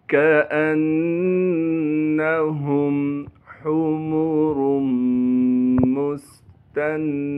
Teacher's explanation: मीम को हम सीन से मिलाएंगे क्योंकि सीन साकिन है, सीन में सीटी अदा करनी है।